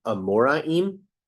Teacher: the English R is said with your tongue bent in the middle of the mouth but the Hebrew is a guttural